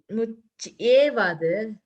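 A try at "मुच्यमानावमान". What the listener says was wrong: Yeah, I think when you said and the ich you didn't say, it sounded like something else.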